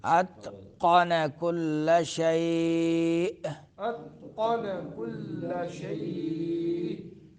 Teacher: آخر میں جھٹکا دیں گے، حمزہ ہے